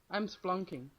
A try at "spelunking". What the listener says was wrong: there's an E in there, it's spelunking.